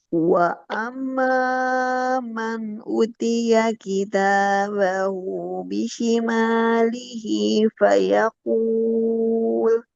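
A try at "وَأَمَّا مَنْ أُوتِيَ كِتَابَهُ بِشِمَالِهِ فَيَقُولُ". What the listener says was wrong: Nah, utia tahan panjang. Wa tahan dulu. Wa amma man utiya kitabahu bishimalihi fayaqul.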